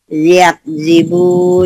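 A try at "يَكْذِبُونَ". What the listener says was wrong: Bukan ya, yak. Yakzibun. Yakzibun. Ngomong example, exodus, example, Yakzibun, X ya, express. Ada S-nya, express.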